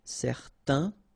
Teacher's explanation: you've got this A-I-N together, and then they will produce this un sound. Okay, so it's nasal in your nose, un. Okay, if you add this at the end, then it will change the thing, and then you will pronounce it n.